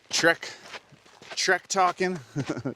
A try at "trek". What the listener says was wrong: Shrek. So I'm just saying it sounds like you're saying. Sounds like you were saying Shrek.